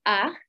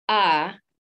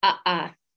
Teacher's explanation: the shortened ah the elongated ah the downward uh and the re-articulated uh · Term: four variations